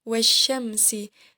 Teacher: Nah, di sini huruf alif lamnya tidak terbaca karena diidghamkan kepada huruf syamsiyah. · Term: alif lam syamsiyah